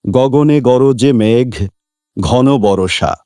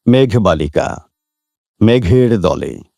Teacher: কাজেই গ এবং ঘ এর উচ্চারণ ভিন্ন। একটি ঘোষ অল্পপ্রাণ আরেকটি ঘোষ মহাপ্রাণ। অর্থাৎ ফুসফুস থেকে বেশি বাতাস বের করে দিতে হবে।